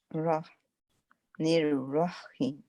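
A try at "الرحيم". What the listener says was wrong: हाँ, यानी H यानी कि हा को वाजे करना है। रहमान में भी दोनों दफा। निर्रहीम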